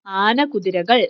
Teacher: ആന കുതിരകൾ എന്ന് പറയുന്നിടത്ത് കായ്ക്ക് ഇരട്ടിപ്പ് വരുന്നില്ല